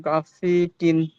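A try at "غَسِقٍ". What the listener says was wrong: হয়নি, বুঝতে পেরেছেন? এখানে গয়নটা 3 আলিফ টান দিয়ে বলতে হবে, গয়ন আলিফ জাবার গ, সিন জের সি, গ সি, কফ দুই জের কিন, গ সি কিন। আপনি তাড়াহুড়ো করছেন, আস্তে আস্তে করে বলেন।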